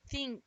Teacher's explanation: when the I sound is stretched it becomes e